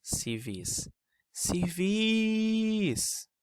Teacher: reparem que em todas essas palavras a sílaba mais forte é a última · A sílaba mais forte é vis. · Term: sílaba tônica